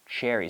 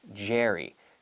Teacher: start with the CH activate the vocal cords activating the vocal cords on the CH you have the J the J sound